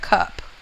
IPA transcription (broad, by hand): kʌp